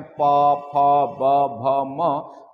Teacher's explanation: अब हम बात करते हैं यहाँ पे प वर्ग, तो इसका उच्चारण स्थान ओष्ठ होता है। कैसे, जब आप उच्चारण करते हैं तो ओठ आपस में क्या करते हैं, टकराते हैं।